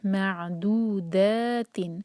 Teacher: کو ہولڈ کریں گے جس میم پر شدہ ہے، اور پھر میم کو عین سے جوڑیں گے اور عین پر جھٹکا نہیں آنا چاہیے ، دو 2 حرکہ مد طبعی ہے، معدودات، دا مد طبعی،